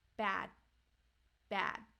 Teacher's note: at the end it is held, bad, bad. So my tongue is staying there